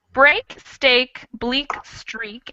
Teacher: that break is a little wider more of an a sound and the other two are like a long e sound